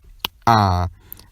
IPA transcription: ǁ